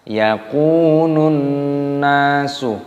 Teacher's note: kafnya dibaca panjang, ada wawu sukun dibaca mad tabi'i 2 ketukan